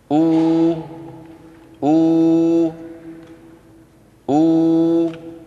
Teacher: بانضمام الشفتين إلى الأمام مع ارتفاع أقصى اللسان. أو أو أو، هكذا الواو العربية لا بد فيها من ضم الشفتين إلى الأمام.